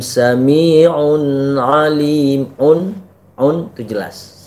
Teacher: Sami'un alim itu wastul halaq atau huruf di tengah-tengah tenggorokan.